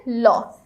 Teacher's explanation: ল যখন আমরা উচ্চারণ করি তখন আমরা জিহ্বাটা এমনভাবে ব্যবহার করি যে জিহ্বার দুই পাশ থেকে বাতাস বের হয়ে আসতে পারে। আর পার্ষিক ব্যঞ্জন হচ্ছে মাত্র একটি।